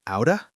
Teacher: Out of, two separate words, becomes outa in natural speech. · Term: connected speech